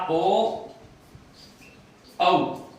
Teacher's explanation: जैसे कंठ प्लस औष्ठ। कंठ प्लस औष्ठ से आ गया ओ औ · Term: कंठोष्ठ्य